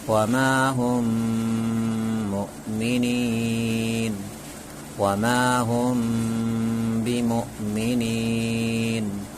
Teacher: اور اخفائے شفوی کو ایک الف کے برابر گننا اور اخفا کے ساتھ پڑھیں گے